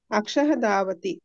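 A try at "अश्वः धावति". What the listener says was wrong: అశ్వః అక్షః కాదండి బాబు.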